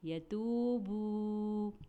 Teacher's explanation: واو ساکن اس سے پہلے پیش، یتوبوا، اس لیے ہم نے اسے ایک الف کے برابر کھینچا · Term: واو مدہ